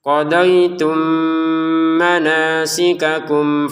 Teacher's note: tanwinnya di sini masukin ke ro sehingga cara bacanya gfurur rahim rahimnya berapa enam harakat ya faidza qoditum manasikakum nah faidzahnya di sini dua harakat kemudian qadaitum bertemu mim maka dimasukkan mim yang pertama dengan mim yang kedua dengan dengungan